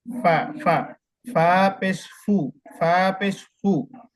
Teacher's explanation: উপরের দাঁতের আগা এবং ঠোঁট, নিচের ঠোঁটের প্যাট।